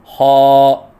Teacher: خا کو ادنی حلق سے ادا کریں اور پر کر کے پڑھیں، کیونکہ یہ حروف مستعلیہ میں سے ہیں اور حروف مستعلیہ کو پر پڑھا جاتا ہے، لہذا خا کو پر کر کے پڑھیں۔ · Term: حرف خ